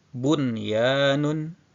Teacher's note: wau ataupun ya dalam satu kata maka tidak boleh idgham melainkan tetap dibaca dengan jelas bunyi Nun sukunnya